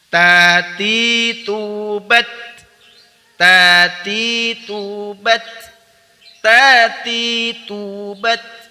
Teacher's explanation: Al-asyidahnya dulu baru al-hamsnya ya. Bunyi ditahan kemudian baru nafas atau udara dialirkan.